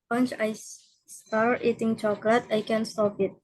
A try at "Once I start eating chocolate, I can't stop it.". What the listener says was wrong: Good job. Betul, stop it.